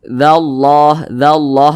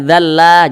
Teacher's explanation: Ketika kita berjumpa dengan kalimat Allah, apabila huruf yang posisinya tepat berada di belakang kalimat Allah, jika dia berbaris ke atas, berbaris fathah seperti ini, atau berbaris dhammah seperti ini, maka kalimat Allah ini dibaca tebal, dibaca tafkhim. Jadi dibaca dzallah gitu.